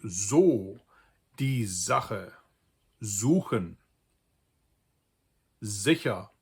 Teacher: If an S is followed by a vowel, almost all of the time it's pronounced like a voiced sibilant, like a ZZZ sound.